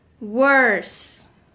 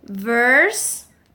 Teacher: the sound W needs your lips rounded, and the sound V needs your lips apart